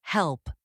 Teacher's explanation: Feel how the back of the tongue rises for the dark L. · Notice how the L is deeper and slower.